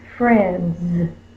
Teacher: Because it's voiced, we'll add the S, and it says the Z sound.